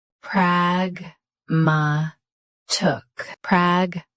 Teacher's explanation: Stress prag. Keep ma light, end with t.